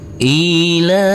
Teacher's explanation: Ila huruf lam kita baca panjang dengan panjang dua harakat karena di atasnya ada huruf alif kecil yang berdiri tegak lurus